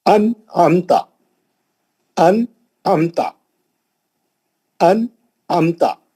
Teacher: नून को जल्दी पढ़ेंगे। नून को नहीं खींचेंगे। नून का गुना नहीं करेंगे। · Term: इजहार